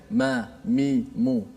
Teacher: Bila kita sebut huruf mim, Makhraj di mana? Di bibir. Kita rapatkan dua bibir.